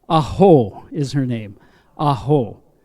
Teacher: it is the vocal cord closed with the vowel sound A. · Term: glottal stop